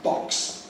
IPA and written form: bɒks (box)